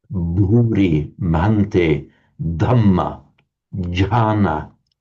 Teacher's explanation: It doesn't come naturally to us in English because we don't have that phenomenon in English, the voiced consonant aspirated.